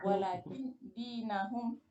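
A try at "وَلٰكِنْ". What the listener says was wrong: Salah. Walakin. Kinnya sukunkan ya. Walakin.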